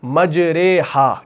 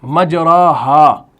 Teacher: امالہ کہتے ہیں فتحہ کو کسرہ کی طرف جھکانا